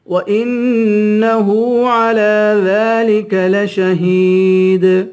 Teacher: وَإِنَّ پہ غنہ کریں گے، ہاں پہ الٹا پیش ہے، ایک الف کے برابر کھینچ کر پڑھیں گے. عین پہ کھڑا زبر ہے، اس کو بھی ایک الف کے برابر کھینچ کے پڑھیں گے.